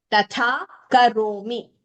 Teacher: the second tha is Mahaprana, first is Alpa Prana.